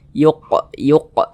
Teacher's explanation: pantulkan yuq yuqah begitu dan ini termasuk kepada Qalqalah kecil kepada Qalqalah sugro karena dia berada di tengah bacaan atau di tengah kalimat · Salah satunya huruf qaf. Kalau dia sukun dipantulkan. Ini huruf qaf kita pantulkan.